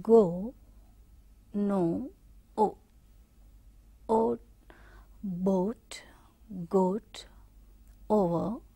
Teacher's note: See here how it is moving from the central position to the back position. The tongue is raising at the center point and then it is moving towards the back one.